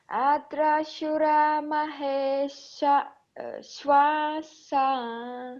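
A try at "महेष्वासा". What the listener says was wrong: Yeah, here we don't separate it. Maheswasa.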